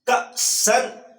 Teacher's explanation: کاف حمزہ زبر کا، یہ کاف باریک ہے ڈنڈے والا